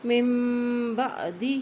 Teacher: ہا کے نیچے کھڑی زیر ہے اس لیے اس کو بھی ایک حرکت لمبا پڑھیں گے